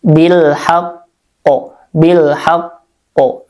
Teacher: Jadi tasdidnya sempurnakan dulu. Kemudian dilanjut dengan bunyi qalqalah. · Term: qalqalah kubro